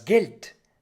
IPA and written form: ɡɛlt (Geld)